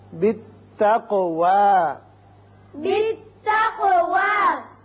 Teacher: تو یہاں وقف ہوگا. اس صورت میں آپ واو پر کھڑا زبر ہے، ایک الف سے زیادہ آواز نہیں کھینچنی